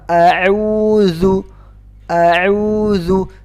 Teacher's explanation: Zal di mana makhraj zal? Makhraj zal adalah di ujung lidah keluar di antara ujung gigi seri.